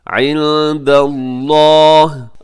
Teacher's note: اللَّهِ، عِنْدَ یہاں نون ساکن کے بعد دال ہے، اور آگے لفظ اللہ کو موٹا پڑیے گا کیونکہ اس سے پہلے دال کے اوپر زبر ہے